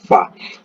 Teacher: Fa ini berada di makhrajnya berada di kedua belah bibir, tapi gigi atas itu menyentuh bibir bawah